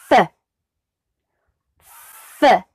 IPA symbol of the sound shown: f